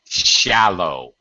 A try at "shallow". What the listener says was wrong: That's it. Shallow. Very good.